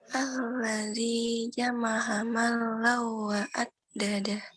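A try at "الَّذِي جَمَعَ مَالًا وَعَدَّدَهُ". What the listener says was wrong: Alladzi jama'a ma-nya panjang, alladzinya panjang. Wa addada ya. Ada hukum apa aja di situ? Ada hukum apa aja tuh di bacaan itu?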